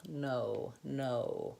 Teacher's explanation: in American English, the O vowel is two sounds · So the O vowel in American English is actually two vowels going together. So I slide from the O to the vowel.